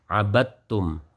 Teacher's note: zatnya huruf dal dan juga sifatnya ini semuanya terlebur masuk kepada tak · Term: idgham